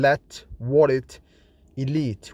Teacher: The clear L, which is voiced alveolar lateral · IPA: /l/